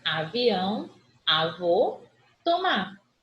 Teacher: Oxítono, última sílaba, tônica.